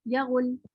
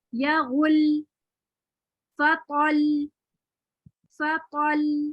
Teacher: غین اور لام کے درمیان آواز کا والیوم بڑھایا میں نے. یا غل, اگر میں نہیں بڑھاتی والیوم تو پڑھتی یا غل. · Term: نبر